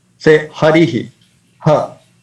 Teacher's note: So the difference between this ha, you can kindly notice this ha and visarga is that this also uh, sounds like ha, but while pronouncing visarga, we don't have to hold it. When we pronounce ha, this particular syllable, we have to hold it.